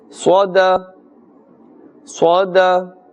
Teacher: sad is part of huruf musta'aliyah, so we must pronounce with a fuller mouth